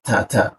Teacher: ujung lidah tempelkan ke belakang gigi bagian atas aja. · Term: huruf ta